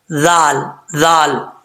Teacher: یہ ذال بغیر سیٹی کے پڑھی جاتی ہے، اس کو زال نہیں پڑھنا، ذال ذال.